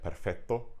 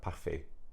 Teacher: we can see all those CT sounds have been erased in the main Romance languages